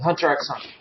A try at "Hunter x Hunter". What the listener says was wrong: You don't pronounce the X.